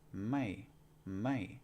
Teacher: with a low class consonant like this it's gonna be a falling tone